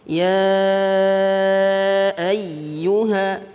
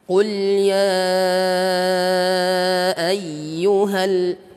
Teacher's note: Ada hentakan ataupun ada tekanan pada huruf ya ini. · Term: nabr